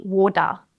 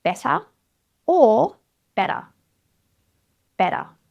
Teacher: I can't even try and break this sound down slowly because if I do it slowly, water, it's going to sound like duh. So the key really is quick, light tap to the roof of the mouth. Water. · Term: T flap